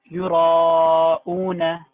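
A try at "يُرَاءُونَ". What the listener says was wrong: Make the alif thicker. يراؤون.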